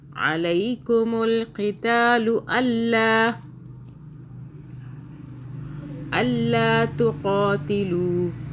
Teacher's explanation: قاف کو موٹا پڑھیں گے